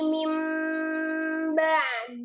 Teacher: Jadi dari kata min ba'di ada nun sukun ketemu dengan ba, di sini menjadi mim ba'di disertai dengan gunnah yang sempurna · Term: iklab